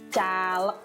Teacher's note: bunyi G-nya berubah menjadi bunyi ek gitu ya